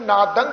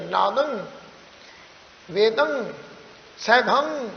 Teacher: ਜਾਂਦੀਆਂ ਨੇ ਨਾਦੰਗ ਗਗਾ ਪਰ ਇਹ ਗਗੇ ਵਾਂਗੂ ਉਚਾਰਨ ਨਹੀਂ ਹੋਣਾ ਇਹਨੂੰ ਨਾਸਕੀ ਉਚਾਰਨ ਕਰਾਂਗੇ ਜਿਹੜਾ ਗਗਾ ਹੈ ਉਹ ਸਾਡੇ ਮੂੰਹ ਦੇ ਵਿੱਚ ਹੀ ਰਹਿ ਜਾਏਗਾ ਤੇ ਨੱਕ ਰਾਹੀ ਇਹਦਾ ਉਚਾਰਨ ਹੋਏਗਾ ਸਾਊਂਡ ਨੱਕ ਰਾਹੀ ਆਏਗੀ ਨਾਦੰ ਵੇਦੰ ਸੈਭੰ ਨਾਕਰਾਈ ਸਾਊਂਡ ਆਉਣੀ ਚਾਹੀਦੀ